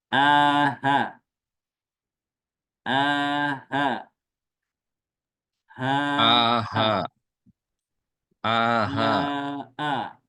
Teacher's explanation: Hamzah dan ha itu tempatnya adalah adanya di pita suara Jadi bukan dari dada keluarnya